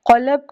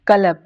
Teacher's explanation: यानी जहाँ पे आपका पैलेट एंड हो रहा है, आपका तालु एंड हो रहा है, वहाँ एंड वाले हिस्से से काफ और क़ाफ अदा होते हैं। क़ाफ थोड़ा सा मोटा लफ्ज़ है, इसको हम पूरे फुल फेस से अदा करते हैं। काफ बारीक है और ये थोड़ा सा ऊपर से अदा होता है।